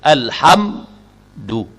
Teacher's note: Mesti diizharkan, dizahirkan bunyi sukun pada mim tu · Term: izhar syafawi